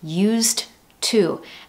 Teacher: we're following that hard D in the past form with a hard T at the beginning of to